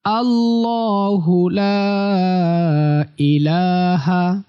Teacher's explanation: লাতে তিন আলিফ টান হবে · লাতে 3 আলিফ টান হবে। আল্লাহু, ল মোটা, আল্লাহু লা ইলাহা, আল্লাহু লা ইলাহা।